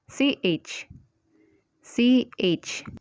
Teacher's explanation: this word as not not next consonant is the aspirated cheer this consonant is almost the same with the consonant cheer but this one is aspirated so just add H to the pronunciation to the original consonant